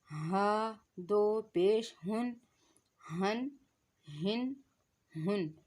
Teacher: حمزہ اور ہا یہ دونوں حلق کے نیچے والے حصے سے ادا ہو رہے ہیں